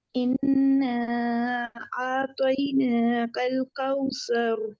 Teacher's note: اوپر جو 4 حرکت کا مد ہے نا اس کو 4 حرکت لمبا کرنا ہے